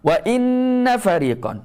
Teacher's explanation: Wajib kita dengung 2 harakat, sengau dalam lubang hidung. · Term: wajibal gunnah